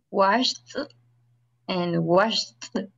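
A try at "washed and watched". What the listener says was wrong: Pero es que me está pronunciando lo mismo. Vaya, el primero es sh y el segundo es ch.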